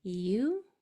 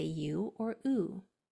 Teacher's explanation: It can say its whole name U with your mouth starting wide and going forward. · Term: two long sounds